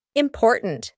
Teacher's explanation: And then at the end, we have a stopped T, important. There's no T that we actually speak at the end